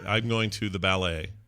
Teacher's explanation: So the emphasis on the second syllable.